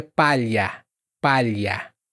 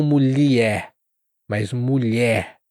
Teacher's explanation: A sua língua, ela como que se arrasta no céu da boca, né? Ela desliza no céu da boca para dizer palha.